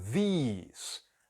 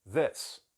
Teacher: O que é i a gente pronuncia como e, o que é e a gente pronuncia como i. O segundo também é um pouco mais longo, these, e o outro é mais curto, this.